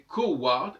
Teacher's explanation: Ça doit se prononcer coward. Parce que le U, placé en deuxième position, ne se prononce plus comme un U ou un OU, mais se prononce comme un W. Donc c'est coward, et ça donnait l'anglais coward.